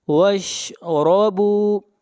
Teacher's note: را کو موٹا پڑھیں گے، را کے اوپر زبر ہے